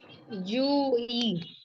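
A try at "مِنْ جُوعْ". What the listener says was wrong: नहीं नहीं, आप जू आप पढ़ेंगी, मिन जू, मतलब आइन को आप सुकून देंगी, ठीक है।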